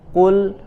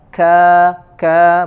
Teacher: Di huruf yang pertama tadi kul, maka tidak boleh ada angin yang keluar ketika melafazkan huruf qaf, ya. Berbeda dengan kaf, ka maka dikeluarkan angin sedikit.